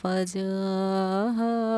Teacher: تو ہم حروف مدہ کو 4 الف کی مقدار کے برابر کھینچ کر پڑھیں گے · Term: مد متصل